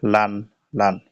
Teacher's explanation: জিহ্বার আগার কিনারা উপরের মাড়ির সাথে লাগাইয়া একটি হরফ উচ্চারিত হয় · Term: লাম